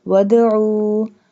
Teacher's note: do qalqalah on dal because dal has jazm. There are 5 letters qaf, ta, ba, jim, dal.